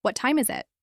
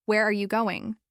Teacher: Your voice falls at the end signaling that you want information. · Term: falling intonation